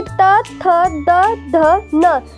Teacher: अब हम देखेंगे त थ द ध न दंत्य दांतों की सहायता से बोला जाता है